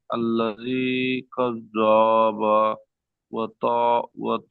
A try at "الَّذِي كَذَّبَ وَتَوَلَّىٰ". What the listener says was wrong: মাশাল্লাহ, কিন্তু কাজ্জাবা, বা টান হয়ে গেছে, কাজ্জা টান হয়ে গেছে। আল্লাযী কাজ্জাবা, কাজ্জাবা ওয়া তাওয়াল্লা।